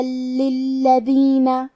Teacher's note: کلمت للذین میں حرف اللام پہ تشدید ہے تو ہم دو حرف کے برابر لام کو پڑھیں گے کیونکہ تشدید کی اصلیت دو حرف ہے.